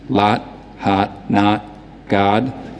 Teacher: The lot vowel is going to be very open, fronted, no lip rounding in a New York accent.